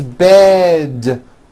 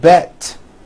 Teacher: It's not bet with an unvoiced T, it's bed with a voiced D.